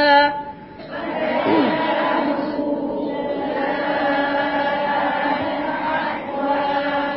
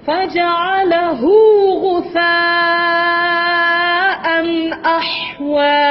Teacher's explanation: Hu tu mad silah saghirah tidak panjang